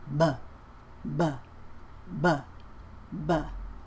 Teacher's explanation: P&B uses both of the lips P is your voiceless consonant B is voiced which means if you put your hand on your throat when you do a voiced consonant you're gonna feel a vibration but but but but but it uses the same lip position